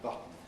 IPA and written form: ˈbʌtn̩ (button)